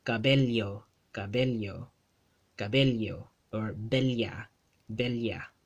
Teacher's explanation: It's a double L sound. Whenever two L's are spelled side by side in a Spanish word in the Philippine Spanish dialect, they get pronounced as a li.